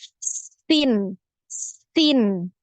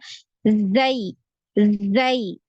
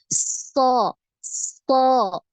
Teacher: Ada satu lagi ya, ketika pengucapan ya ketiga huruf ini ya, karena suara yang keluar ini lewat celah-celah yang sempit ya di antara gigi seri atas dan gigi seri bawah, maka suara yang dihasilkan ini lebih tajam ya, lebih tajam ya.